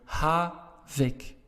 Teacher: Because your stress is on the first part of the word, havik.